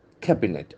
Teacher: the accent force on the first syllable